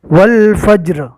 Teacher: رو کے اوپر جزم پڑھیں گے، زیر رکنے کی حالت میں جزم بن جائے گا